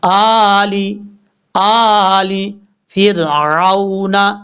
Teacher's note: حمزہ کے اوپر کھڑا زبر ہے، ایک الف کی مقدار اس کو لمبا کریں گے ، آلی آلی فرعون، فا کو را سے ملائیں گے اور